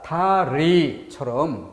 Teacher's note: 다리처럼 초성에 있을 땐 R 발음에 가깝죠.